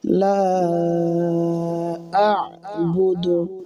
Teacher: লা আ'বুদু হামজা আইন জবর আ, প্রথমে হামজা উচ্চারণ হবে, আর আইন গলার ভিতর থেকে চাপ দিয়ে উচ্চারণ হবে।